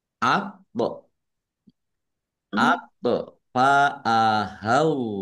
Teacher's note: sukun bacaan qalqalah dibaca memantul ditampakkan pantulannya